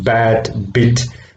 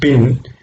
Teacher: P is a voiceless sound and B is a voiced sound.